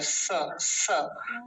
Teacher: ये दंत्य सकार होता है, दांतों से बोला जाता है, स, दांत मिलते हैं इसमें।